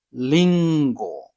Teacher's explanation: R is somewhere between English R and L